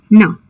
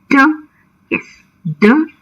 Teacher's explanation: Don't you feel the tongue touching the alveolar ridge? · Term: alveolar sound